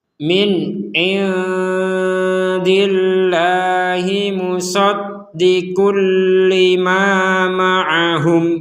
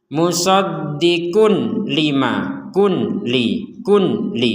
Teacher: Ada tanwin bertemu lam, maka kita memasukkan tanwin ini kepada huruf lam.